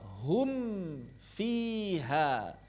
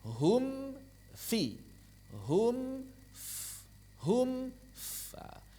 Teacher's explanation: Kemudian hum fi ada perpindahan dua kali. Pertama ke em, kedua ke f. Hum fi. Hum f hum fa di sini dua kali. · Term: izhar